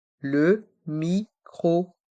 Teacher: les lettres o et n se prononcent on c'est une voyelle nasale